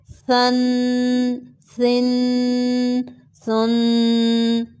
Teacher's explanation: ثا 2 پیش ثن، سیٹی کی آواز نہ آئے